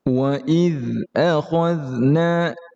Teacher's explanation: dia huruf dzal tidak ada pantulan, tidak ada qalqalah